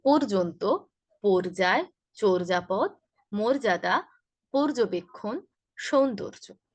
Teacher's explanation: উচ্চারণ হচ্ছে শুরুর অ এর উচ্চারণটা ও এর মতো হবে।